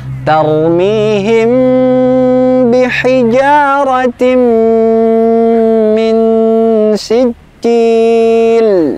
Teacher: Bacaannya gunnah. Gunnah kita panjangkan sampai terasa sengau di hidung kita